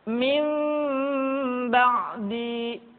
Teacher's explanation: ketika mengucapkan huruf mim, kedua bibir kita agak sedikit direnggangkan, tidak sempurna rapat. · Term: iqlab